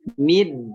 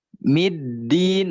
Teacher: Dalnya mau keluar tapi masih ditahan secara tasdid.